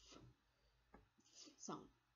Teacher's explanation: So it's a F sound. There is no vibration. It means it's an unvoiced sound.